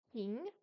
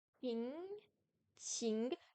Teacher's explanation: Le Q en pinyin se prononce comme un S avec une explosion d'air. C'est une des 6 consonnes aspirées du chinois mandarin et avec le dos de la langue contre le comme le chi.